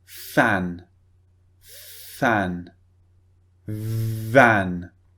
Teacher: they both use the bottom lip and the top teeth so the bottom lip goes against the top teeth and you push air out of your mouth